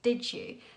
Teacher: another nice feature is the way he pronounces did you with a j in the middle so that happens because we have d and y together and